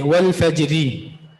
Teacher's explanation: را مرامہ یعنی وہ را جس پر آپ وقف بالروم کرے، حرکت کا 1/3 حصہ آپ ظاہر کرے، یہ وقف بالروم ہے۔ تو اس را کو ہم باریک پڑھیں گے، والفجری۔